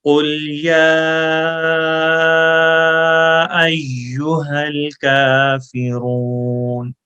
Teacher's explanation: یا کے اوپر مد ہے، اس کو اڑائی الف لمبا کریں گے. اڑائی ایک الف کا مطلب یہ ہوتا ہے ایک الف لمبا کرنے کا کہ جتنی دیر ہاتھ کو کھولنے میں لگتی ہے، جیسے با، تا، سا، یہ 1 الف لینتھ ہے.